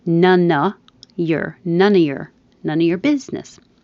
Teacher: I should emphasize that the stress is going to be on biz.